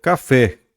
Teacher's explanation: a gente teria um oxítono, porque a última sílaba é tônica no café